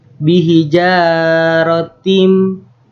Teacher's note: Karena bihijarotim, karena huruf ta berharokat kasroh tanwin bertemu huruf mim. Dibacanya masuk dengan dengung dan ditahan sampai 3 harokat. Bihijarotim itu ada mad arid li sukun. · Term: idgham